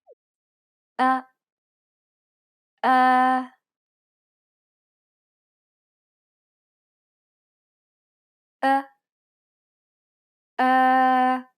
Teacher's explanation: it's similar to the o sound in the word boring but with unrounded lips